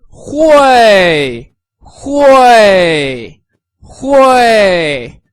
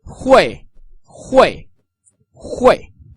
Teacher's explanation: With the fourth tone, which goes from up to down